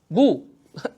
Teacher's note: So I go to the place of articulation of the fatha or the kasra or the dhamma. What is the place of articulation of dhamma? The lips.